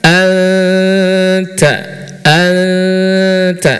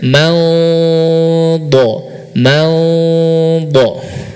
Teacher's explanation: Ta huruf tipis, dad huruf tebal, ya, maka ikhfa-nya pun akan mengikuti.